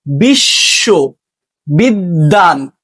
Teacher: মধ্যে বা শেষে বফলা যুক্ত থাকলে যুক্ত ব্যঞ্জনের দ্বিত্ব হয়।